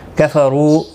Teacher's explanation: زی یا مدہ ہے، ایک الف کے برابر کھینچ کر پڑھیں گے۔ کفروا را پیش کی وجہ سے پر پڑھا جائے گا، واو مدہ بھی ہے، ایک الف کی مقدار کے برابر کھینچ کر پڑھیں گے۔